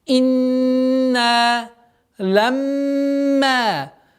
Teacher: Инна, в первую очередь, четкое произношение огласовки кесра. Потом удержание назализации в размере двух огласовок нун, после которого долгота в размере двух огласовок фатха